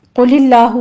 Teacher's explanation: قل اللہ میں قوف کو پر پڑھیں گے آگے لفظ جلالہ باریک پڑھا جائے گا